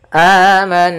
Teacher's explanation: Amanna, di sini ada bacaan gunnah, yaitu suara nunnya kita tahan dulu.